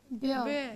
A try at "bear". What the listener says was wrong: It is not beer, it is bear. There is a difference between ear and air.